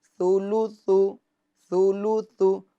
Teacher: اگر توجہ نہیں رکھیں گے ہجے کرنے میں تو پھر تا کے اندر سین والی آواز پیدا ہو جائے گی. تو آرام سے ثولوثو ثولوثو سولوسو، یہ سین کی آواز پیدا نہ ہو کیونکہ تا یہ اس کے اندر نرمی کی صفت پائی جاتی ہے.